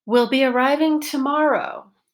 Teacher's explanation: there's a pitch change on the vowel of the stressed syllable of the focus word